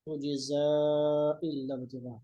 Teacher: अब हम जब दोनों आयतों को मिलाएंगे तो उस सूरत में ज़ा को लंबा करेंगे क्योंकि फिर आगे हमज़ा है।